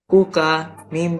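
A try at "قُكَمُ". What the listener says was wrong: জি কপটা একটু মোটা হবে। ও কপ এবং কাপ উচ্চারণ করে কাছাকাছি পার্থক্য করবো। ও কা মু।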